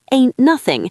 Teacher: It's fascinating how the T can completely vanish in phrases like ain't nothing. The sounds link together so seamlessly that it truly does sound like a different dialect.